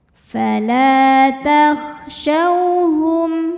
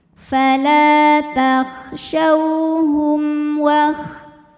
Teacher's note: Ada hukum idhar syafawi karena mim sukun menghadapi huruf selain mim dan ba, yaitu hurufnya huruf waw, maka mim sukun ini kita bunyikan dengan jelas